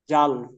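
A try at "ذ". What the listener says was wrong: জাল হবে না, যা। জাল হলে একটু ছোট হবে।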